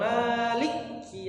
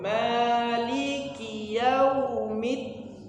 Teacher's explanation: jangan diputus, jangan Malik maliki, tapi disambung maliki yaumiddin.